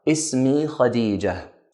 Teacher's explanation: the word Khadija ends with a ta marbuta, so we end it with a ha sound